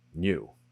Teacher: Really deep cut, having a little Y sound before the oo in words like new.